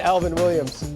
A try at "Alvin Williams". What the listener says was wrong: It always sounds like you say Elvin. Elvin Williams. It's your accent, yeah.